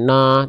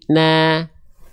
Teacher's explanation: Nun ketika fathah bunyi vokalnya A, maka dia termasuk ke dalam huruf yang tipis.